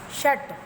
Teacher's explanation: मूर्धन्य श और ट में हलंत, मतलब आप हाफ प्रोनाउंसिएशन कर रहे हो ट का